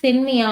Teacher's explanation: இதுல இருக்குற இகரம் வந்து குறைந்து ஒலிக்குது அரை மாத்திரை அளவா வந்து என்னன்னா குறைந்து ஒலிக்குது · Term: குற்றியல் இகரம்